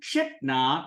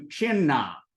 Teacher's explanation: Then, moving right along, the ta wanders on by, and it goes in front of the na. Here, when ta encounters na, it radiates itself and turns into the na. And what this does is you go from chitna to chinna.